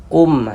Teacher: Karena dia izhar maka dibaca jelas, tidak berdengung. Huruf mim sukunnya kita baca jelas. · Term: izhar syafawi